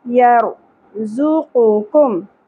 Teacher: دونوں جگہوں پہ ذال ھذال یر را پر ہوگا یر زوقم زا شدت سے ہوگا پیش کو زیادہ نہیں کھینچنا زو نہیں پڑھنا زو قو قاف کے اوپر پیش ہے سنگل